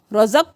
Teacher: قاف پہ قلقلہ کریں گے، ساکن ہے